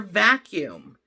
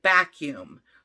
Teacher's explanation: I'm sure you've heard your child call it a BACUUM. So instead of the V sound, your child is now producing that stop, B, for vacuum. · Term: stopping